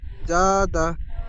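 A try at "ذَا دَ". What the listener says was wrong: যা, আরো বেশি করে টান দেন, জাদা। তো টানটা কম হয়ে যাচ্ছে।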